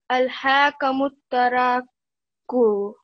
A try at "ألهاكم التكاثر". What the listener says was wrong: ألهاكم التكاثر. And then over here as well, I think you didn't give quite enough time on the alif. So again, from yesterday's lesson, what did we learn about alif madda? How much time should we give it?